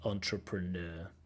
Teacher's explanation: Stress on the last syllable. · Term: word stress